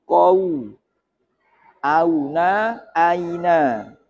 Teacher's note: wawu sukun atau ya sukun yang diawali fathah maka dibaca mat lain atau bacaan lain atau matlen sama saja. Suaranya u dan i.